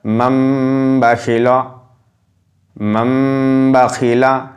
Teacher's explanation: সাকিনকে মিম এর দ্বারা পরিবর্তন করে এক আলিফ পরিমাণ গুণনা সহ পড়তে হয়, একে আমরা ইকলাব বলবো।